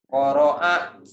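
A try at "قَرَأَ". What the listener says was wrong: Qoro'a. Jangan qoro'a. Jangan ke ain. Qoro'a. Jangan ke ain. Itu ain. Qoro'a.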